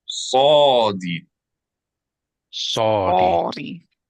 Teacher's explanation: S produced while tightening throat with tongue touching roof of mouth slightly further back than a normal S.